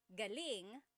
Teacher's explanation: So if the emphasis is on the second syllable, galing that means good or great or excellent.